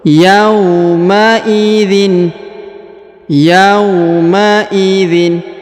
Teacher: huruf ya diayun sekali karena di depannya terdapat W sukun